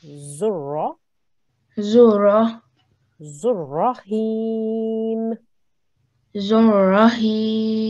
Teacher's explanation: we see the shadda there. So we need to join the za to the ra.